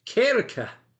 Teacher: In the Scottish accent, Kirk often sounds like kirka with that rolled or softer R sound.